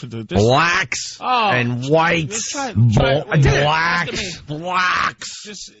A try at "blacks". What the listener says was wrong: You're saying it like brack almost. B-L-A-C-K-S. Just say black.